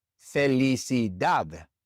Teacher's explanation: It's not a vowel, and it's not an N or an S. And so the stress naturally falls on that last syllable, dad.